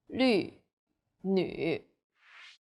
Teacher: The U sound is like the French U. Your lips should be round and pouting.